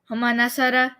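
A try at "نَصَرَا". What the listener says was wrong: Nasara, like a little bit longer.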